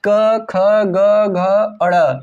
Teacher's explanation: देखो ये जो क वर्ग है ना, ये जो क वर्ग है इसका उच्चारण स्थान कंठ से होता है